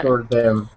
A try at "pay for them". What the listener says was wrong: I'm hearing that your tongue is doing pay for them, and it's hitting the front of your teeth because. So I hear that Spanish. The roll is creeping in.